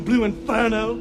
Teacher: Southern English accents are non-rhotic. You leave the R sound out after a vowel in a word like inferno.